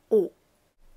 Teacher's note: O, not like the English O that does that nice twist upwards at the end. O, your lips stay.